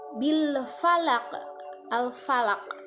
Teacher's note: Alif lam mati menghadapi huruf fa dan itu termasuk hukum tajwid alif lam qamariyah, sehingga bunyi lam matinya harus terdengar.